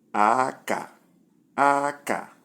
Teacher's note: Number 2, we have high, low